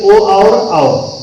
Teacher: कंठ और ओष्ठ से ये दो वर्ण बोले जाते हैं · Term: कंठोष्ठ